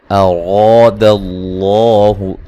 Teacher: اراد اللہ، یہاں را کو موٹا ادا کرنا ہے، را کے اوپر زبر ہے اور الف مدہ ہے، اور لفظ اللہ کو بھی موٹا پڑھنا ہے، اس سے پہلے زبر ہے۔